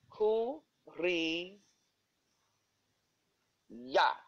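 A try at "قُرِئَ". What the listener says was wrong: Kuria, because there is no vowel on ya, so we will not spell it. But there is a vowel on hamza. Kuria.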